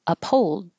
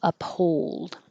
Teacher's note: I put a W here because there's an invisible W when you go from rounded to unrounded